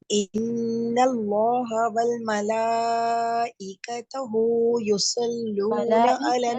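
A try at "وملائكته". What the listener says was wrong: ملائکتہ تا کے اوپر پیش نہیں ہے، تا کے اوپر زبر ہے.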